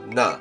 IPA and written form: nə (Canada)